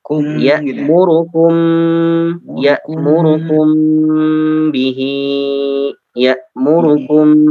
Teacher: Mim sukun kalau bertemu dengan ba atau bertemu dengan mim lagi maka harus ditahan 2 harokat.